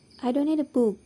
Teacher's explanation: jika pembicara ingin mengatakan bahwa dia tidak membutuhkan pena atau pen, dia akan menekankan pada kata book